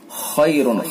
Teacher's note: خا کو پر کر کے پڑھیں گے، را کو بھی پر کر کے پڑھیں گے اور را کے اوپر یہ دو پیش کی تنوین ہے، تنوین کے بعد یا واو میم نون میں سے میم ہے تو اس کے اندر ادغام ہوگا، ادغام ناقص، ادغام ناقص یعنی ادغام بالغنہ.